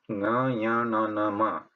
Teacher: Anunasika means Mukha and Nasika. Both have to be used to pronounce that sound, to say that sound.